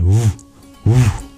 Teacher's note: That corresponds to our labial region of our mouth. And so the labial approximant, woo, woo, like a vibrating W, is its Bija mantra.